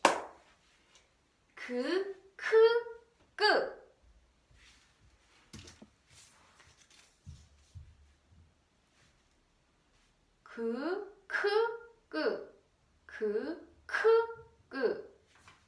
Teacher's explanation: Just a little bit air, a lot of air, and no air.